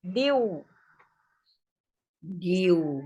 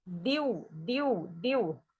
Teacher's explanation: gunahnya ini tidak terlalu kuat bunyi n-nya, tapi diftong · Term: Sengau diftongnya